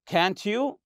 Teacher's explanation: So when you say, can't you, the tag question here, this is also a rising intonation.